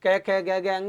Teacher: अकु है, कंठ है, यानी इसका उच्चारण है कंठ, इसलिए कै खे गे गे अंग या और है को कंठीय वर्ण कहा जाता है, कंठ से बोले जाते हैं